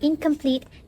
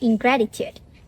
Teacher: the occurrence of ing is expected before velar consonant k, like incomplete, and g, like ingratitude. This is because saying in followed by hard k or g sound can be a bit awkward for us.